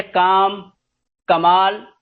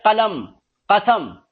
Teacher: کا کی آواز کی دو آوازیں اردو میں ہیں، چھوٹا قاف اور ایک حلق سے بڑا قاف